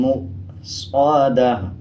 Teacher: گول تا ہے، جب اس پہ وقف کریں گے دونوں پیش کو سائلنٹ کر دیں گے، تا کو ہا میں تبدیل کر دیں گے اور وقف کرتے ہوئے آدھے ہا کی آواز آئے گی